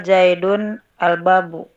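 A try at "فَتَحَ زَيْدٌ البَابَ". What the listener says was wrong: Fataha Zaidun al-baba ya, objek jadi dibacanya fathah ya. Fataha Zaidun al-baba.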